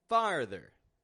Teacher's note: we're lowering our jaw down getting this ah and then pulling back to the r